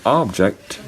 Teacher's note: for the word object, the first syllable is unstressed, the second syllable is stressed. And that means that for the first syllable, you cannot use a long vowel.